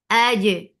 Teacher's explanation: Qalqala, first you are applying uh, shidda, cutting off the sound totally and then applying qalqala by opening that makhraj.